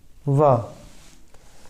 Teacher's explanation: तो दंत और ओष्ठ इनसे बोला जाएगा व वर्ण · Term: दंतोष्ठ